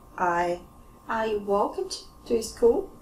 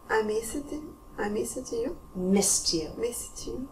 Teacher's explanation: voiceless consonant sound, like p, k, s, sh, k, f, all quiet. So we end with T.